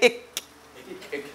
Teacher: Not the front part. The middle of the tongue is going up right there, touching the roof, and then it's pulling away. As it pulls away, it hears that cracking sound. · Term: KAAF